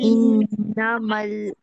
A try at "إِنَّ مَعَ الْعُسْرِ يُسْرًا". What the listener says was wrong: مل نہیں پڑھیں گے, میم عین اور لام, عین کی ادائیگی بھی کریے. ان مع العسر یسرا.